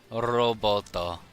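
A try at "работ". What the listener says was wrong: No, just a robot. Yeah, now put an A instead of an O for the first one. R-A-B-O-T. Say that as a word. Rabot.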